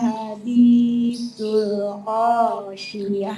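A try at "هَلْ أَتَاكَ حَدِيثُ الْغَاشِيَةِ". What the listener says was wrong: Go, bukan ho, go. Go food. Go. Go food. Go food. Hal ataka hadithul ghasyiyah. Hal ataka hadith ya. Hal ataka hadithul ghasyiyah.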